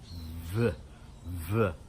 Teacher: It's almost as if we're biting our bottom lip. V. And the air comes through there. When we do B, it's like an explosion. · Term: labiodental sound